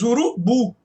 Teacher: A sílaba mais forte é a última, o bu. Então observe que essa é a sílaba tônica, ou seja, a sílaba mais forte. · urubu é oxítona, ou seja, a sílaba tônica é a última